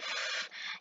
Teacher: Kalau di sini di mouth bisa misal kalian memproduksi bunyi f, itu berarti antara bibir di bagian bawah itu kamu tempelkan ke gigi atas, maka akan muncul bunyi f.